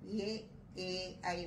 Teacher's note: ఈ ఏ అనేది ఉచ్చారణలో కంఠ తాలవ్య ఉత్పత్తి స్థానానికి చెందినదిగా వ్యాకరణజ్ఞులు భాషా శాస్త్రజ్ఞులు పరిగణిస్తున్నారు